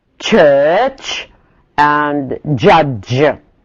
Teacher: the sound of the phoneme begins as a plosive and ends as a fricative